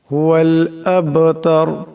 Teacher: শানিআকা হুয়াল আব, এখানে বা সাকিন, বা হলো কলকলার হরফ, আওয়াজটি টক্কর খাবে। আবতার, এখানে রা সাকিন হয়ে যাবে এবং রাকে মোটা করিয়া পড়তে হবে।